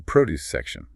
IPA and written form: ˈprɒdjuːs ˈsekʃən (Produce section)